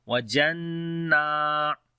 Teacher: This noon is coming with shadda sign. We make gunna sound here, and also there is a standing fatha we long as well.